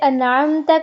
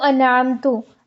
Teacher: تا کے زبر کو تو یعنی پیش میں بدل دیا، تو حرکات کی تبدیلی بھی لحن جلی میں آتی ہے۔